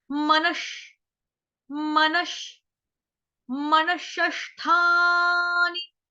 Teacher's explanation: उसके आगे विसर्ग है, विसर्ग का उच्चारण आधे षटकोण वाले श से हुआ। क्यों? क्योंकि आगे षटकोण वाला श आ गया आपका।